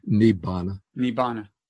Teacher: So the two Vs, or the combination of R and V, gets turned into a double B, nibbana.